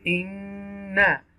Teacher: To take sound into your nose for a moment, it's called a nasalization.